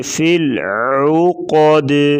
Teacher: عین کی آواز گلے سے نکالیں گے